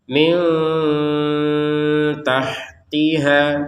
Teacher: nun sukunnya bertemu ta maka kita baca dengan samar